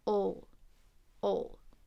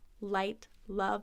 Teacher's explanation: love is a light or clear L dark L is at the end of a syllable